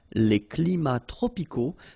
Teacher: even if we've got the plural form here, S, we don't pronounce the S, and then we don't pronounce the T either